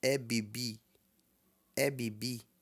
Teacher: Bibi não é bem estourado nesse caso tá é um B normal